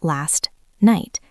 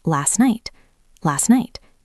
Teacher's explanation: Last ends in t. Night starts with N. We almost never release that T. We don't say last night.